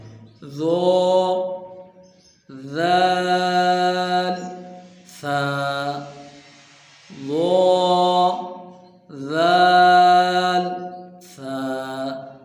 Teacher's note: ان کا مخرج ایک ہی ہے، زبان کا سرہ اور اوپر کے دانتوں کے اندرونی کنارے سے ادا ہوتے ہیں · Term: حروف لساویہ